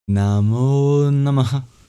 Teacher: Namah has a very interesting sound at the end, which is an expulsion of breath. And when it's before a voiced sound, it turns into the labioguttural vowel O.